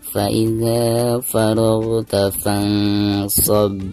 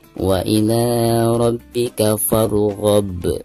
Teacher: Maka ketika diwakafkan dihukumi qalqalah kubra, dan cara membacanya itu harus dipantulkan dengan suara pantulan yang tebal ya